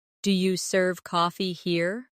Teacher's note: In casual speech, do you becomes diya.